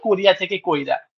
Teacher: যেমন ওই বলেছিলাম যে কোরিয়া থেকে কইরা অর্থাৎ ই টা আগে এসে উচ্চারিত হচ্ছে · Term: অপিনিহিতি